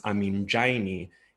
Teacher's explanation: And the same can be said for ami and raini, which becomes aminjaini in the genitive, where that trill r is strengthened to a retroflex affricate j